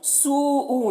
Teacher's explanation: سوء، یہاں پر دیکھیں جو مد ہے اس مد کو مد متصل کہتے ہیں، مد متصل کو 3-4 الف کے برابر کھینچ کر پڑھتے ہیں